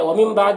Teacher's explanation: نون ساکن کے بعد با ہے تو نون کو اس میم سے بدل کر غنہ اور اخفا کے ساتھ میں پڑھتے ہیں، اس کو اقلاب کہتے ہیں۔